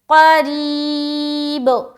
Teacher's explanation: را کو موٹا نہیں بلکہ باریک رکھیں گے کیونکہ یہاں پر زیر ہے را کے نیچے